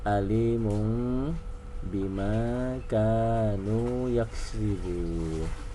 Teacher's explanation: n-nya kan Alimun kan tanwin tu n ah karena katau B jadi n-nya berubah menjadi m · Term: iqlab